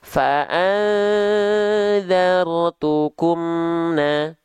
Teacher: mengizharkan mim sukun dari syafawi menjelaskan mim sukun dari bibir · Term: izhar syafawi